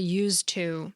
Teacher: Our tongues just don't like having to pronounce too many consonants in a row. So it's hard to pronounce the final D in used when it's right next to the T in to, and we whittle it down to used to, making it easier on our mouths but a little harder on listeners, because now past tense used to sounds like it's in the present tense.